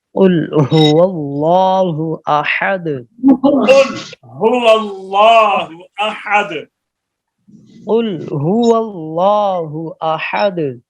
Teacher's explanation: जुबान का वो हिस्सा जो हलक से मिला हुआ है, जब वह ऊपर के तालुक के नर्म हिस्सा के साथ लगे, इससे कौफ निकलता है